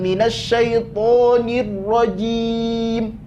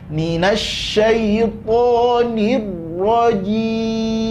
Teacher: Mim ada sifat tawasud di situ. Jadi jangan langsung dipotong mimnya, enggak boleh. Jangan minasyaitonir rajim.